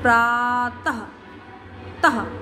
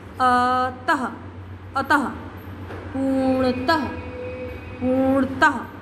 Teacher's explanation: तो ह का साउंड आ रहा है पीछे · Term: विसर्ग